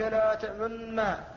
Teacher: فقد أشممت النون الساكنة شيئا من صوت الضمة، إذا سمعه الإنسان عرف أنه صوت مختلط بين الإشمام بين الضم والسكون، فهذا الإشمام الثالث.